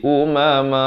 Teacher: Kemudian kalau kita waqaf jadi umama. Man itu menjadi satu baris ma dan dipanjangkan dua harakat.